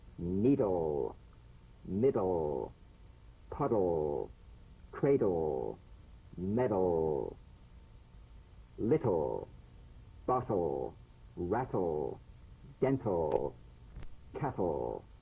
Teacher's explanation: DL and TL, cognates, voiced and unvoiced, tongue tip to gum ridge consonants. Bounce the D or T drum beat off the gum ridge and return there immediately for the L. Feel the typical drum beat damped in the tip of the tongue as the D or T click slides quickly into the L.